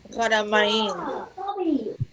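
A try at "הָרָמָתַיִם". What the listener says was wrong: Close, actually close. You need the tav here. Haramatayim.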